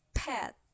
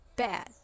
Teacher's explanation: The first sound in each word is made exactly the same way, except one is voiceless and the other is the voiced.